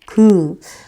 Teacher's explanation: 혀 뒷부분이 올라가는 걸 느낄 수가 있을 거예요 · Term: 기역